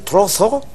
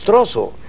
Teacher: nosotros las zetas españolas las convertimos en eses